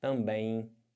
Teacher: você além de estar nasalizando o é você tem esse M que vai ficar com som de i